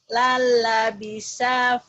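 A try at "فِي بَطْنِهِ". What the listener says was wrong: Bat nih, bukan but, bapak. Bat nih. Lala bisa fi batnihi.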